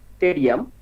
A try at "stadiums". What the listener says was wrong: স্টেডিয়ামস, এসটা উচ্চারণ করি না কেন আমরা, স্টেডিয়ামস।